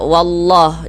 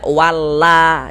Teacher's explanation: Kenapa kok huruf lamnya kita tebalkan menjadi la gitu?